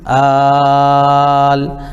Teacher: اس کو کم از کم ہم جو ہے 3 الف کھینچیں گے اور زیادہ سے زیادہ 5 الف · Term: مد لازم کلمی مخفف